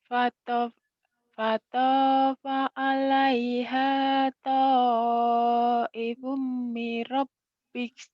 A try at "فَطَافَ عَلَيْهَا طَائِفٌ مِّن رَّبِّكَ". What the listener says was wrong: Kurang tasdidnya. Mir rabbik kurang nyamber. Panya pendek. Fatafa alai Fatafa alaiha ta'ifum mir rabbik. rabbika فطاف عليها طائف من ربك من ربك وهم نائمون.